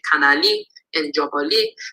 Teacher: in the negative perfective, we have a li suffix, a high toned li suffix, but low appears on the root